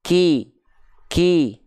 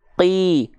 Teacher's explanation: hams itu dia ada percikan nafasnya untuk huruf Kaf dia ada percikan nafasnya Maka kalau huruf Kaf kasrh itu dilafalkan